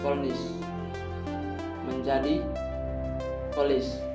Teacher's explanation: fonem N diasimilasikan dengan fonem L yang mendahulunya, sehingga menghasilkan bunyi yang lebih seragam di antara keduanya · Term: asimilasi progresif